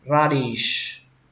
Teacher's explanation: Lên dòng âm đầu tiên ra và xuống dòng âm thứ hai dish